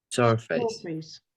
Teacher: Yes, the first syllable is stressed.